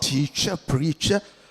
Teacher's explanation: All drop the R sound.